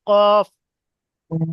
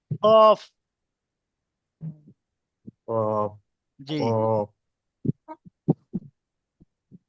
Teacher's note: কফের মাখরাজ হচ্ছে জিবের গোড়া এবং তার বরাবর উপরে তালুর সাথে লাগিয়ে উচ্চারিত হয়।